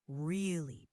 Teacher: Really, tone rises when asking with surprise.